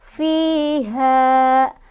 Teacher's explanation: Fiha mad tabi'i lagi karena ada fathah ketemu sama alif, bacanya panjang 2 harokat juga ya. Jadi walaupun berhenti misal di sini karena ada waqaf al-waqfu aula, kalau tidak ada huruf lain di depan mad tabi'inya ya udah dia tetap mad tabi'i 2 harokat ya.